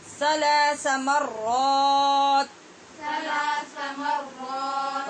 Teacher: را کی آواز پیدا کریں اور سا کو نرمی سے پڑھیں بغیر سیٹی کی آواز کے